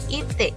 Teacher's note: Misalnya pada kata itik, I yang pertama dibaca I, sedangkan yang kedua karena berada di belakang, dibaca E.